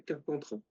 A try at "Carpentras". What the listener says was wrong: Mais faut le S, Tu prononces pas le S à Carpentras?